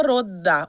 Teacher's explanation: Agora, nos falares ocidentais, rota vira roda, o T passa D. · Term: sonorização da consoante surda